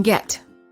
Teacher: the lips are relaxed the tongue is also relaxed and in the mid-high position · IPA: ɛ